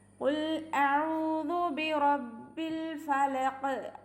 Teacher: ഖുൽ ഖാഫിനെ ശ്രദ്ധിക്കുക, മഖ്റജിൽ തന്നെ കൊണ്ടുവരാം. നാവിൻ്റെ ഏറ്റവും അവസാന ഭാഗത്തു നിന്നാണ് ഖാഫ് വരുന്നത്, അത് ശ്രദ്ധിച്ചിട്ട് പാരായണം ചെയ്യണേ.